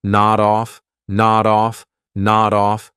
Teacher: I'll take that D sound and I'll connect it on the off, but I have to combine it together.